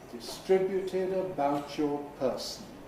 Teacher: With a fall again. Low fall on person.